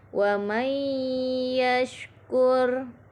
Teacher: Pada ayat 11 terdapat bacaan idgham bi gunnah, yaitu pada bacaan wa may yashkur. Di sini nun sukun bertemu huruf ya, dibaca idgham bi gunnah.